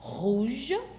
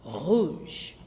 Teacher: you will feel the vibration in your throat. So R in French it produces a sound at the back of the mouth and in the throat. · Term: more throaty sound